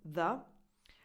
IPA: ð